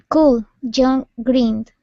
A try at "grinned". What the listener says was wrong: Let's take a look at that last word instead of grinned. Okay, give me a good R sound. Grinned. Grinned. Much better with the GR. Now let's work on the short I. Instead of gree, it's grinned. Grinned.